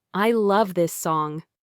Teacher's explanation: First, try saying, "I love this song." Say it with genuine excitement, letting your voice rise on love and then fall slightly at the end, full of enthusiasm.